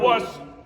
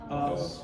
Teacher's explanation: It's an onset with your throat kind of closed. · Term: glottal stroke